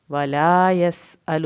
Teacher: یس سین کو سیٹی کی آواز کے ساتھ، الو لام کی پیش کو لمبا نہیں کرنا۔